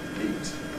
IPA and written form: biːt (beat)